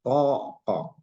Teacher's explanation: Dia masih ada jarak antara lidah dengan langit-langit.